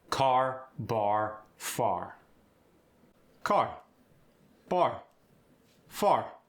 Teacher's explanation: unlike Boston or Britain, the R's are rhotic. They're pronounced.